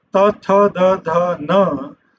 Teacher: Then the fourth row, they are called dentals, because when you utter ta, tha, da, dha, na, you are touching your teeth with your tongue.